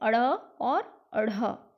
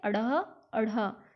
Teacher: उक्षिप्त व्यंजन वो होते हैं जिनमें जो है जीभ, हम जब बोलेंगे तो हमारी जीभ पीछे की ओर जाकर झटके से आगे गिर जाएगी। ये दो हैं अड़ और अढ़।